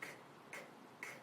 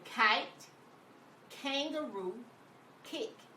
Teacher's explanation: When you make the letter K, your tongue is pressed up at the back of your mouth. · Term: the k sound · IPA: /k/